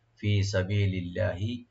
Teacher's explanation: আর লফজ জালাল এখানে আমরা লাইট করে পড়বো